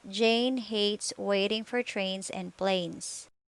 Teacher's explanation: the position of your lips not rounded and relaxed your tongue's position tense moves from the mid high to high position common spelling patterns for a sound a plus consonant plus e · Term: third vowel sound